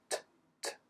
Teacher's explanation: about how the sound is made a sudden release TT right there's a blockage and then it's released suddenly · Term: plosive sound